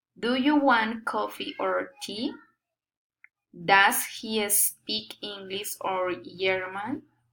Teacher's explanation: Alternate question, rising and falling intonation.